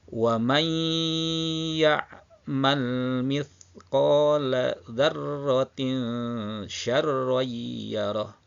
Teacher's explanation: Di sini nun masuk bunyinya ke dalam huruf ya. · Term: idgham